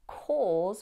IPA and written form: kɔːz (السبب)